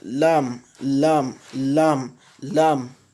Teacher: des deux bords de la langue un autre point de sortie l'un des deux bords de la langue s'appuyant sur le palais